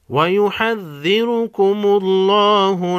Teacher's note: لفظ اللہ کو لام کو بھی موٹا پڑھیں گے، اس سے پہلے حرف میم پر زبر ہے پیش ہے۔